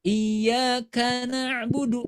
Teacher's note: Kamu harus menjaga sifat syiddah yang terdapat pada huruf kaf dan huruf ta.